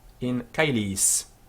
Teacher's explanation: in caelis the AE is pronounced I, as in Caesar. It's a diphthong, two letters coming together to form a distinct sound. In medieval Latin, this became caelis.